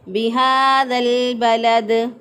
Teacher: جو ہے یہ حرف مد الف کے قائم مقام ہوتا ہے، کھڑی زبر جو ہے وہ الف کے قائم مقام ہوتی ہے، تو اس لیے اس کو 1 الف کے برابر لمبا کر کے پڑھیں گے